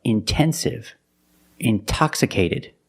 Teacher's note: we have the stress after the NT we pronounce the T like a pure T TT release the sound